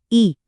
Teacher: कुछ स्वर जैसे ई बोलकर देखिए, ये जीभ के अगले हिस्से से आते हैं। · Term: अग्र